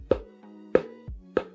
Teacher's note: a gente precisa da passagem do ar mas a gente precisa também dos lábios por isso que é um som bilabial